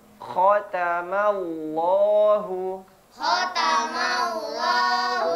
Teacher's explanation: Nah, huruf kho. Sama seperti huruf ghain. Di mana makhrajnya? Tenggorokan bagian atas.